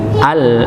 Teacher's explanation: Di sini kita temukan ada nun sukun ketemu lam. Ya, maka nun sukunnya sudah tidak terbaca, langsung masuk ke lamnya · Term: idgham bila gunnah